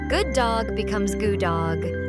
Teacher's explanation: Same sounds merge. Good dog becomes goo dog.